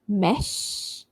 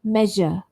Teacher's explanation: Another pair is sh and j. So sh, voiceless, as in the word mesh. And then j, voiced, as in the word measure.